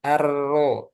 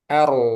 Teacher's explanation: ketika masuk r-nya langsung tebal Ar jangan arro tapi ar maksudnya itu tebal Ar Lagi arro